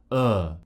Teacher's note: just gently open our mouth is just slightly open open uh my tongue is flat but it's slightly raised from the bottom of my mouth so to find the position put your tongue down low flat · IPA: /ɜː/